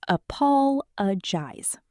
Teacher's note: Four syllables. Apologize. Stress on the second syllable